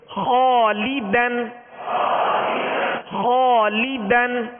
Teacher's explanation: اس الف کو پر یعنی موٹا پڑھیں گے، اس لیے کہ الف سے پہلے والا حرف پر ہے